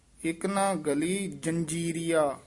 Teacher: ਗਲੀ ਪੋਲਾ ਹੀ ਬੋਲਣਾ ਗੱਲੀ ਨਹੀਂ ਕਹਿਣਾ